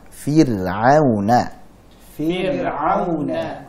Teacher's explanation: Ra sukun sebelumnya kasrah. Contohnya fir'auna. Fir'auna. Baik, jadi ra-nya dibaca tipis.